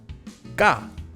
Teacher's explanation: If before saying ka, you take a quick pause, stopping your mouth from moving, it'll come out as this double version, ga. Instead of saying ka, take a quick pause beforehand, ga.